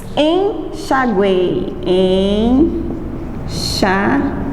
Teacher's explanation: na palavra enxaguei eu tenho três sons vocálicos em uma sílaba. E a sequência deles é semivogal, vogal e semivogal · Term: tritongo